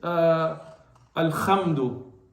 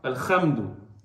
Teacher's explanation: But if somebody says al-khamdu, some countries they love to make the ha into a kha